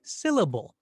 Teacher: it's the first syllable in syllable that gets that extra accent or that extra stress